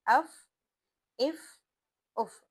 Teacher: हम कोई झटका भी नहीं दे रहे नरमी से अदा कर रहे हैं सांस की आवाज बाहर आ रही है या हवा बाहर खारिज हो रही है